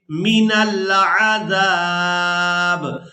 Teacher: تو وقف کی صورت میں با کو ساکن کر دیں گے، زال کو الف مدہ کی وجہ سے کھینچتے ہوئے اس با ساکن کے ساتھ ملائیں گے